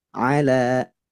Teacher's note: huruf ain tidak boleh masuk ke hidung. Ala. Nah, itu dari hidung. Tapi dia dari tenggorokan bagian tengah.